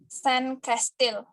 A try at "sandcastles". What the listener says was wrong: Sebenarnya kamu tuh pronounce sand-nya itu udah benar, sudah bagus. Tapi seharusnya di bagian sini kamu pronounce-nya castles, ya, bukan castle. Oke, jadi you should pronounce it by sandcastle. Sandcastles.